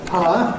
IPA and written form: paə (Power)